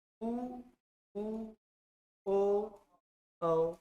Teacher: जिसमें होठ गोल हो रहा है उसको वृत्त बोलेंगे